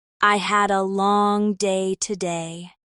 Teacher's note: The stress on long changes the emotion.